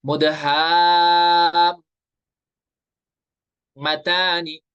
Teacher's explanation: ادھر مد لازم اور لین لازم جو ہے اس کو ہم 3 الف یعنی 6 حرکات کے برابر کھینچ کر پڑھیں گے